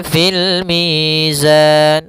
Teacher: Dan pada lafal mi ada bacaan mad th'i kembali yaitu adanya ya sukun didahului dengan huruf berharakat kasrah panjangnya dua harakat. Kemudian pada lafal zan ada bacaan kembali yaitu mad arid lukun.